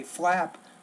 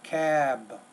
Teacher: when you have the B at the end of the word, the vowel before it needs to be longer